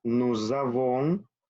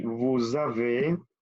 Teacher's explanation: Aquí se une la terminación de la S con la vocal. Nous avons, lo mismo aquí, vous avez, y suena como z, z.